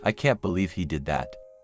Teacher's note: the words can't and did are stressed more than the other words